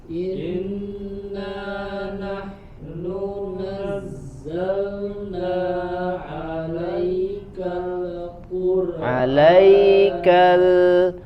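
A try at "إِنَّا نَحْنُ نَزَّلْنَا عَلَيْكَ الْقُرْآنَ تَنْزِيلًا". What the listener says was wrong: tidak dipantulkan, tahan pada makhrajnya huruf lam. 'Alaikal ikhfa disamarkan kemudian ditahan. Tanzila bukan tan tapi tanzi.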